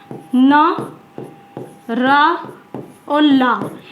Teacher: मसूड़े जो होते हैं हमारे जो दांतों के पास वाले मसूड़े, यानी उनके दांतों का पास वाली जो जगह होती है, दांत जिससे जुड़े हुए हैं, उन्हें बोला जाता है वत्सर्य व्यंजन। यानी दांत और मसूड़ों की सहायता से बोले जाने वाले वर्ण होते हैं, उन्हें वत्सर्य व्यंजन वर्ण कहते हैं।